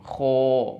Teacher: Karena ini merupakan huruf isti'la yang ketika diucapkan pangkal lidahnya terangkat ke langit-langit sehingga berbunyi tafkhim